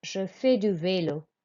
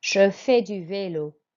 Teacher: we don't pronounce the S, but we pronounce the last vowel sound, which is an A sound, je fais.